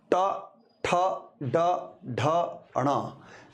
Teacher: ट, ठ, ड, ढ, ण, जब इन वर्णों को बोलते हैं तो हमारे जीभ का अग्रभाग मूर्धा यानी मसूड़ों को स्पर्श करता है। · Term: ट वर्ग